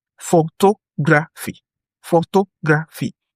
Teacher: Photography has stress on the second syllable.